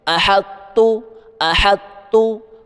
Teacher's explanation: تجوید کا اصول ہے جب طا ساکن ہو اور اس کے بعد تا مشدد آ جائے تو طا کی آواز کو تا کے اندر مدغم مکس کر دیا جاتا ہے۔ طا ایک بھاری مستعلیہ اور مضبوط حرف ہے، اس لیے یہ پورا کا پورا غائب نہیں ہوتا۔ ہم پڑھتے وقت طا کی صفت بھاری پن کو اپنی زبان میں برقرار رکھیں گے، مگر اس پر جھٹکا قلقلہ نہیں کریں گے، اور زبان کو سیدھا تا کے مخرج پر لے جائیں گے۔ · آپ نے طا کی بھاری آواز نکالتے نکالتے سیدھا تا پڑھ دینا ہے